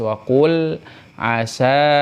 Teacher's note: lam sukunnya izhar jelas · ada huruf mad bertemu dengan Hamzah di dalam dua kalimat dibaca empat sampai 5 harakat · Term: Mad Jaiz munfasil